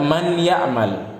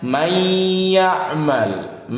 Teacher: Nun bertemu ya, nun sukun bertemu ya, dibacanya diidghamkan. Diidghamkan itu dimasukkan ke huruf setelahnya. Apanya yang dimasukkan?